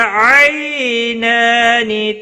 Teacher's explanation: ما الف مدہ ہے، ایک الف کے برابر کھینچ کر پڑھیں گے۔ آئی یا لین ہے، تھوڑا نرمی کے ساتھ کھینچ کر ادا کریں گے